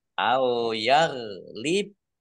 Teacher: bak sukun bacaan kolkolah dibaca memantul atau dipantulkan